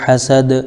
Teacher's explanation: یہاں پر دال آیت کی وجہ سے ساکن ہو جائے گا